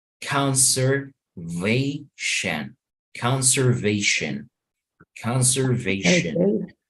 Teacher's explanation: The T-I-O-N, the last syllable is being pronounced with schwa